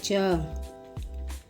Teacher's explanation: च वर्ग के वर्णों को बोलने में जीभ तालु को छूती है।